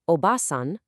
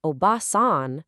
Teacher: Obasan, with a short ba sound, means aunt. But, obasan, where you just hold that a sound for a split second longer, that means grandmother. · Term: long vowels versus short vowels